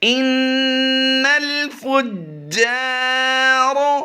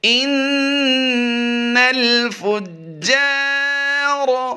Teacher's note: اور را green colour میں دیکھ رہے ہیں، اس کو ہم پر کر کے پڑھیں گے۔ را سے پہلے جو الف ہے، اس الف سے پہلے حرف پر زبر آ گئی ہے، اس لیے یہاں پر الف مدہ کرتے ہوئے لمبا بھی کریں گے